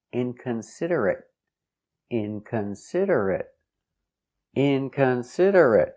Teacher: With a stop T, inconsiderate. · Stress on the first syllable and third syllable.